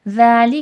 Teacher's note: ذالی کا ذال نرمی سے پڑھا جائے گا اور کھینچ کے پڑھا جائے گا